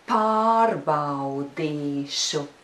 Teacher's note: The stress should always be really noticeable on the 1st syllable, or almost always.